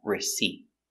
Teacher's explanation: use a stop t put your tongue up